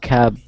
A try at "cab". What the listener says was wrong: That's actually pronounced cab. A taxi, cab, and that's with a B. Taxi cab. Okay? Cap would be with a P.